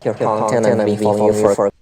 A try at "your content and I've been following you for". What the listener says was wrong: It sounds like you deleted the B, or it was not said very clearly, to my ear at least. It sounds like you deleted the B not just at the beginning of Brazil, but also at the beginning of